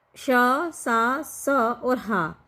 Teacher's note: जो हमारे ऊष्म संघर्षी है वो हमारे अघोष और महाप्राण है